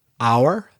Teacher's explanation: some H's are not pronounced, like una hora, hour. The H is not pronounced.